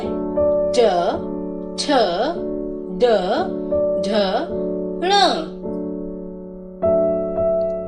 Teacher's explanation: इसमें ध्वनि मूर्धा को छूने से आती है, अर्थात जीभ का तालु को पलटकर छूना। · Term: मूर्धन्य ध्वनियां